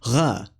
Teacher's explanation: in most dialects, the voiced uvular fricative